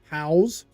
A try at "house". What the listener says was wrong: It's funny when you say house, you kind of pronounce it different than house. You almost put it's almost like you're putting a Z on it.